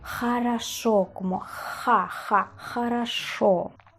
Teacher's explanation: aquí la G es un pelín más suave que la J española